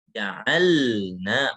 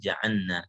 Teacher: Karena lam dan nun itu berdekatan makhrajnya, maka takutnya nanti dia jadi nun gitu. Ja'anna, maka harus jelaskan lamnya.